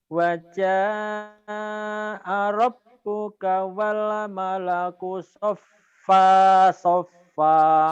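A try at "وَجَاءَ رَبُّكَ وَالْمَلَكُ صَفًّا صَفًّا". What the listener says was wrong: Sopang, katanwin, ikhfa. Sopang, jangan sopa. Kalau sopa dihentikan. Sopang, sofa.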